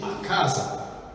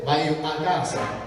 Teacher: Il suono è pulito, il raddoppiamento fonosintattico non avviene